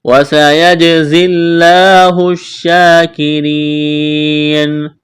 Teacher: سین میں سیٹی کی آواز پیدا کریں گے